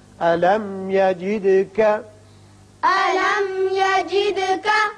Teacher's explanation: میم پر اظہار ہوگا، دال کی صفت قلقلہ